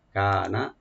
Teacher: কাফটাকে open রাখবেন, একালে টানবেন, নুনে কোনো টান নাই, যেন টান না হয় , এখানে টান হলে কিন্তু মিনিটটা অনেক চেঞ্জ হয়ে যাবে। কানা